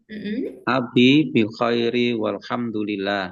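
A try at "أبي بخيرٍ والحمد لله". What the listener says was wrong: Nah, tanwinnya Pak.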